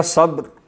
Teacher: با پہ صرف قلقلہ کرنا ہے، اس کو زبر نہیں بننے دینا، اور را پہ قلقلہ نہیں ہونے دینا